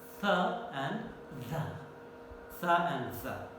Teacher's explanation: the tip of the tongue goes to contact against the upper teeth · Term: dental sounds